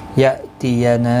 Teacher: حمزہ ساکن کو جھٹکے کے ساتھ ادا کیا جائے گا، باقی کسی بھی حرکت والے حرف کو کھینچنا نہیں.